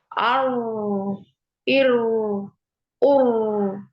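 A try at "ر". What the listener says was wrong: Nah, jangan ditekuk lidah. Ar, ar. Ini kerasa nggak ditekukin lidahnya? kalau jadi nggak ada ini ya, jadi nggak ada takrirnya. Ar, itu ya. Jadi ada takrirnya sekali. Ar. Jadi tetap di posisi di ketika di ini ya, di apa namanya diharokati. Ro, ini lurus ya, lurus ke depan gitu ya. Lidahnya.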